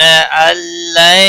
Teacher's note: नून साकिन के बाद हुरूफ यरमलून का लाम आया है, इदगाम होगा बिला गुन्ना